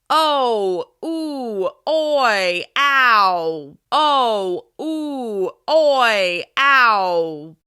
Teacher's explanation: vowel sounds like O, oo, oi, ow are more vertical sounds where our lips round. You should feel your mouth rounding on the vertical plane, kind of like a fish. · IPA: /ow/, /uw/, /oi/, /au/